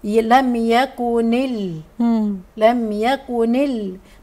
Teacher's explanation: احنا همزه الوصل في درج القراءه لما بوصل الكلمتين بتسقط